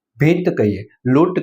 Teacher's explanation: આ અનુસ્વાર ધીમો બોલાય છે એટલે એને મંદ કહેવાય છે અને એની ઈ કે ઉ દીર્ઘ એટલે કે મોટા હોય છે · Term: મંદ અનુસ્વાર